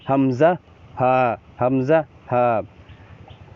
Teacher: 1 number মাখরাজ হচ্ছে হলকের শুরু হইতে, এই হলকের শুরু হচ্ছে এটা।